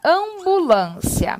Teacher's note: o m ou n não são pronunciados apenas tornam a vogal nasal